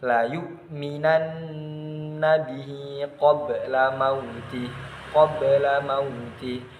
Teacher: Nah, qabla ba sukun dibaca memantul secara ringan. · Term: qalqalah sughra